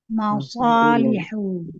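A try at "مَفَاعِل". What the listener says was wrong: Jadi fa-nya panjang.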